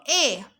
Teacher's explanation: আমার ঠোঁটটা অর্ধবিবৃত হয়ে গেছে মানে অর্ধেক খুলে গেছে অর্ধেক খোলা